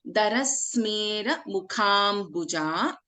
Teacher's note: Kha is a Mahaprana.